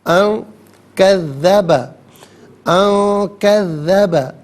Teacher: نون ساکن کے بعد کاف حرف اخفا ہے، تو نون ساکن کو اخفا کے ساتھ پڑھا جائے گا. اخفا کہتے ہیں ناک میں آواز لے جا کر گنگنانا.